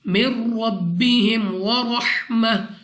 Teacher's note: نون ساکن کے بعد را، ادغام کا قاعدہ ضرور ہے مگر بغیر غنہ کے پڑھیں گے · را کو موٹا پڑھنا ہے منہ اور آواز کو کھول کر